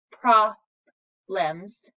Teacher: Short O means we're saying the ah sound